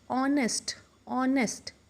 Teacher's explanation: Although it starts with a consonant, but when we pronounce this word, the sound comes of O, that is a vowel.